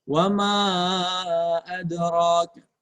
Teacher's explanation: Mad jaiz munfasil. Wama adra ya, panjangnya minimal 2 harokat, maksimal 4 harokat.